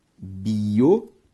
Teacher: Biométrico tem como sílaba tônica a antepenúltima, por isso uma proparoxítona.